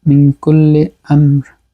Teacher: মিম সাকিনের পরে মিম আসছে, ইদগামে মিসলাইনে সগীর, এটা আমরা ইদগাম করব গুন্নার সাথে, মিন কুল্লি আমর, আমর এই যে এখানে আমর বলে থামছি, রায়ের উপরে কিন্তু দুইটা জের আমরিন, কিন্তু আমরা আমর বলছি।